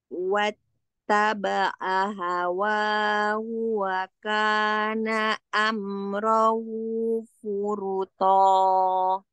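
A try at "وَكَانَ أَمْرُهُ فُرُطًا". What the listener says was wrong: Masya Allah, tadi sudah ahsan ya, yang pendeknya sudah dipendekkan. Amruhu, bukan amrohu. Kata itu saja, amruhu furuto.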